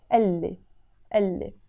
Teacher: when I want to say he told me, I pronounce it as if it's one word here. You see, I wrote قال لي.